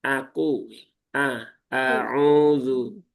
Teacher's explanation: Hamzahnya perlu diringankan, tidak perlu sampai ditekan berlebihan